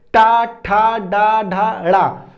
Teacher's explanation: तालु के ऊपर का जो स्पेस हम उसको मूर्धन्य कहते हैं। तो टा वर्ग जो होता है मूर्धन्य होता है।